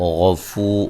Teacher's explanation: غین کو موٹا ادا کریں گے، فو و مدہ ہے